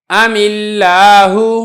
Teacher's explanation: یہاں پر بھی ایسے ہی ہے، یہ جو حمزہ وصلی ہے درمیان میں آنے کی وجہ سے حذف ہو جائے گا اور یہ جو میم ساکن ہے اور لام ساکن ہے لہذا میم کو ہم کسرہ کی حرکت دیں گے اور ہم اس کو پڑھیں گے ام اللہ.